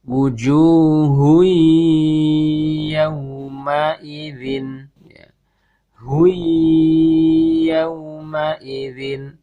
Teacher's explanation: Suara tanwin masuk ke ya, kemudian disertai dengan gunnah yang ditahan.